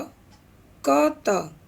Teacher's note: विकल्प है झ, ठ, ज, क, त और इसका सही उत्तर है क, त। प्रश्नगत अघोष अल्प प्राण ध्वनि क और त है।